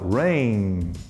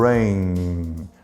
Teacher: Quando você coloca aqui levemente, não precisa apertar muito, você fala rain. Enquanto você tem ar para falar, você nota a vibração, rain. Por isso que é voiced.